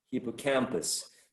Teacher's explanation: And then the secondary stress should be placed before the first syllable, hippo, because hippo receives like sort of also an emphasis, but is less prominent than the stress or the emphasis given to the third syllable. So before the first syllable, secondary stress, at the bottom, hippo, and the primary stress up there before the third syllable, cam.